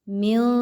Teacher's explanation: من، یہاں پہ دیکھیں تو نون ساکن کے بعد حرف شین آ رہا ہے جو کہ اخفا کی علامت ہے، اخفا کیا جائے گا. یہاں پہ ناک میں نون کی آواز کو چھپا کے غنہ کرتے ہوئے پڑھیں گے